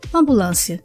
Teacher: A sílaba tônica é lã. Tem o som fechado, então é acento circunflexo.